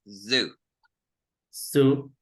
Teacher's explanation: Now the fricative alveolar sound is z, like if it will be a V and we only pronounce zoo.